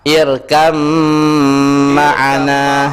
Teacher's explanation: kenapa dia didengungkan? Karena kaedah mim yang bertasdid dia wajib berdengung. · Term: idgham yang berhampiran